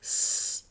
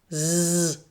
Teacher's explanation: S is unvoiced, like this, S, and Z is voiced, like this, Z